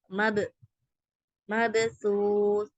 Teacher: காஃப் பா ஜீம் தால் இந்த 5 லெட்டருக்கு சுக்கூன் வரும்போது மட்டும் நம்ம என்ன செய்வோம் அசைச்சு ஓதுவோன்றதை நம்ம பார்த்துக்கலாம் அல்ஹம்துலில்லாஹ். இப்போ இங்க பேக்கு சுக்கூன் செய்யப்பட்டிருக்கு. ஸோ நம்ம அசைச்சு மபசூஸ் அப்படி ஓதுறோம் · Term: கல்கலாவுடைய சட்டம்